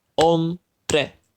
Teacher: And in the word hombre, it is the second to last syllable that we emphasize